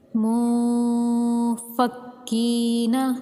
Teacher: نون ساکن کا اخفا کریں گے ایک الف کے برابر رک کر۔ ناک میں آواز چھپتی ہوئی آتی ہے